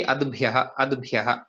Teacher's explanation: दकारः ततः परं भकारः दकारः अल्पप्राणः भकारः महाप्राणः